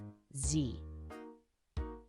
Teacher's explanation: create a buzzing sound between the tongue and the upper front teeth, producing a voiced alveolar fricative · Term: z sound